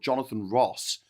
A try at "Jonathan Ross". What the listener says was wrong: with an R, this guy, not with a W.